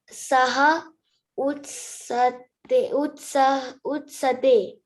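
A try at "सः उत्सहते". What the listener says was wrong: Utsahate. Ha is also there, right? So that ho has not to be forgotten.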